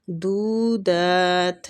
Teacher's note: دو اور دال دونوں کو کھینچیں گے، وہ مد اور کھڑی زبر ہے، قائم مقام ہی کھینچا جائے گا ان دونوں کو۔